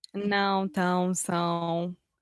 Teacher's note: são as vogais nasais em português, que não existe em inglês e nem existe em espanhol